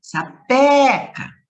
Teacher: na palavra sapeca, a sílaba tônica é o pé